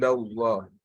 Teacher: So that Allah is pronounced with a full mouth